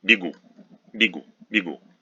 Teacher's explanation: ye unstressed after consonant is pronounced as weak e